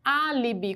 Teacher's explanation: Álibi quantas sílabas nós temos três portanto é uma palavra trissílaba qual que é a posição da sílaba mais forte A antepenúltima então ela também é proparoxítona